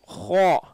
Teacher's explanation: ஹா இல்லை, ஹோ உயர்த்தி சொல்கிறோம் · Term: உயர்வான எழுத்துக்கள்